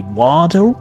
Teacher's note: Is compared to American accent, it's completely different. So now, American English, you might hear they replace the letter T with the D sound.